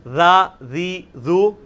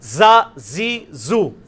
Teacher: را ذی ذو, سیٹی نہیں اس میں نرمی. را ذی ذو, زا زی زو, اس میں وہ سیٹی زیڈ والی آواز. اور یہ وہی مخرج ہے لیکن تھوڑا موٹا.